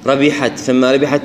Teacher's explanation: نأتي إلى الحاء اللي فيها همس